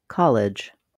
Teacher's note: In college, the first syllable is stressed, college. The clear vowel is on the ka syllable